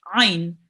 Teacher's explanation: We read it from the middle of your throat.